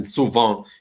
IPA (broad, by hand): su'vã